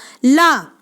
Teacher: तालु से आपकी जीभ टकराएगी